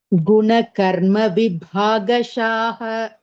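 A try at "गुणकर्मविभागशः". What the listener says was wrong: Okay, maybe there you gave extra dirgha, vibhagashaha.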